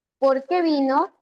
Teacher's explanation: Ahí desciende la entonación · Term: descendente